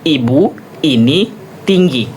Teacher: langit-langit yang ketini nih. Lalu bibirnya tersebar tidak bulat dan mulut hampir tertutup. · Nah, bagian depan lidah, bagian ini, yang ujung ya. Bagian depan lidah dinaikkan tinggi, mendekati langit-langit keras, langit-langit yang keras yang ini. · I, vokal I itu vokal bagian atas dan depan. Cara artikulasinya yaitu pada bagian depan lidah, bagian depan ya, contohnya seperti ini.